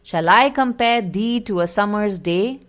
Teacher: it follows a Amic pentameter meaning it has five I AMS unstressed stressed pairs per line